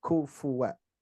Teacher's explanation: Tapi kufu lebih depan. Pangkal lidahnya agak depan sedikit, ku. Jadi bunyinya hams.